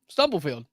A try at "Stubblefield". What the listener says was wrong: You said Sturberfield a little bit. Sturberfield.